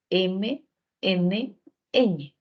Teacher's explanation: nasales cuando el aire Sale por la nariz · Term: sonidos nasales